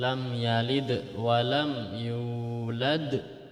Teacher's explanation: Ini dibaca Qolqolah Sugro jadi memantul tapi tidak terlalu ditekan hanya dipantulkan